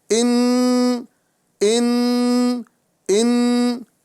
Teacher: جی ہاں، یہاں جو نون مشدد نظر آ رہا ہے، یہاں پر نون کو ظاہر کر کے، یہاں پر نون کو ظاہر کر کے اس کے اندر گننا کریں گے، اور گننے کی مقدار وہی، یعنی ایک الف کی مقدار ہوگی